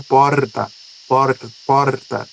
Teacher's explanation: Um som vibrante, um R vibrante